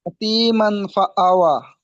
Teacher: ওয়াইয়ের উপরে খাড়া জাবার আছে, এটি আলিফ মাদ্দার সমান, তাই একে এক আলিফ পরিমাণ টান দিয়ে পড়তে হয়।